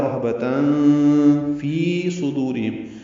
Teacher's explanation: فی آئے مدہ ہے، دو حرکات لمبا کریں گے